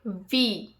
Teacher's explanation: So when V, teeth touch lower lip.